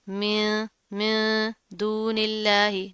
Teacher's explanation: पहले क्या है, मिम, फिर क्या है, मिन, मिन दूनिल्लाही। नून साकिन है, उसके बाद हरूफ इख्वा में से दाल आ रहा है, यहाँ पर इख्वा करेंगे, गुन्ना करेंगे